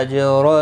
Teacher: جیم ساکن پر قلقلہ ہوگا